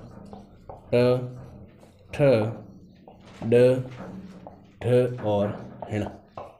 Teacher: इन पांचों वर्णों का उच्चारण स्थान भी कहाँ से होता है, अपने मूर्धा से होता है। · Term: मूर्धन्य वर्ण